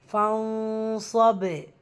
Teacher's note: வசனத்துடைய முடிவில் பா சுக்குன். ஸோ கல்கலத்து குபுரா பெரிதாக அசைச்சு நம்ம முடிக்கணும்.